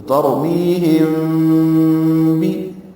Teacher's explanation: میم ساکن کے بعد با آئے تو اخفاء شفوی ہوتا ہے